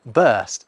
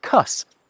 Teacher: a fashion for dropping R sounds in some dialects. The same period produces, bust as a variation on burst and cuss as a variation on curse.